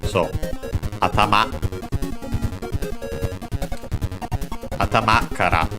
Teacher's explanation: I think the most common accent should be on the last syllable. I think this is one of the words that actually technically has different accents depending on the speaker, but let's focus on the fundamental one, which would be on the last syllable.